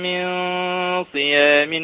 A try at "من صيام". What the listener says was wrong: من صيام لا، عايزين نبين الصاد. نبين الصاد، مخرج الصاد بس. الصاد فيها شبهة سين.